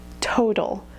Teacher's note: You can just see my lips go in a little bit for that ooh at the end. But at the same time, you wouldn't hear the completely pure vowel, total.